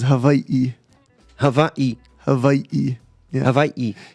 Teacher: there's an okina which is like um what you would call a glottal stop